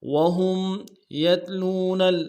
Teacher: قولهم وهم يتلون الكتاب، واو کو نم سے ادا کریں گے، ہا کو میم ساکن کے ساتھ ملانا ہے، غنہ کریں گے ، وهم يتلون یا کو تا کے ساتھ ملائیں گے، یا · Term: یا لین